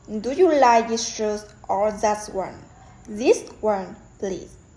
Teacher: this and that are more stressed to show a contrast between the two items.